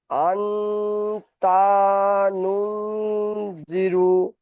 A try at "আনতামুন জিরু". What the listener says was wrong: মাশাল্লাহ ভাই, অনেক সুন্দর হয়েছে, কিন্তু এখানে এই তা যাবার তা আপনি টান দিয়ে ফেলেছেন। তা যাবার তা হারাকাত এসছে, দেখেন তার উপরে জাবার এসে, জাবারটি হলো হারাকাত, টান দিয়ে ফেলেছেন। তাড়াতাড়ি পড়তে হয়, পড়েন তাহলে, তাড়াতাড়ি পড়েন। তা টান হয়ে যাচ্ছে ভাই, তা টান হয়ে যাচ্ছে। তামুন জিরু।